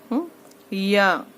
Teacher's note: या जबान की बीच और ऊपर के तालू से, उसके मुकाबिल ऊपर के तालू से